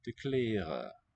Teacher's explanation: Final N is dropped.